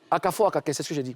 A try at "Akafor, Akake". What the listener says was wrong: Non, tu as dit Akake, Akafor. Non, c'est pas Akake, Akafor, c'est Akafor, Akake.